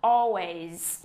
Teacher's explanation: Chúng ta sẽ nhấn cái âm tiết thứ nhất o, tròn cái môi vào o ways. Ok, và nhớ tận cùng của chữ always, trong cái chữ viết nó có âm S, các em phải nhớ xì Z ra giùm cô nha.